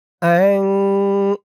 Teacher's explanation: আন হামজা দিয়ে নুন ধরবে, ইকফা গুন্নাহ। নুন সাকিনের পরে ইকফার হরফ জা।